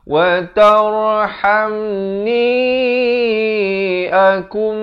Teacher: Di sini nun mati bertemu mim. Idgham bi gunnah masuk beserta dengung kadar panjang 2 harakat.